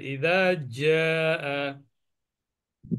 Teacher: প্রথমে জালটা পাতলা হবে, ইদা জা